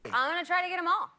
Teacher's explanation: when she connected get them she dropped the th and we got get him